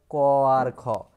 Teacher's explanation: প্রতিটি বর্গের প্রথম দ্বিতীয় ধ্বনিকে কিন্তু অঘোষ ব্যঞ্জন ধ্বনি বলা হয়